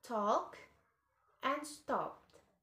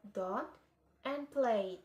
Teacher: T and D are alveolar, so the tongue is pressed against the alveolar ridge.